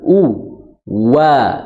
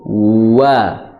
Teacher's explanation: makhraj waw itu letaknya di kedua bibir. Cara membaca waw adalah dengan memajukan kedua bibir, ya, intibaqus syafatain kalau di dalam buku tajwid, dengan merapat atau memajukan wa, seperti itu, wa, ya.